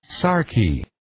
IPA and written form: 'sɑːrkiː (Sarky)